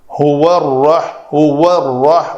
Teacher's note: واو کے لیے شفتین گول اور را کو پر کرنا ہے